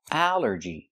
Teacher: It's 3 syllables. Allergy. The stress is on the first syllable.